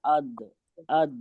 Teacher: तो हमारा जबान की करवट जाके लगेगी ऊपर की बाईं तरफ की या दाईं तरफ की दाढ़ों के मसूड़ों में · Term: दाद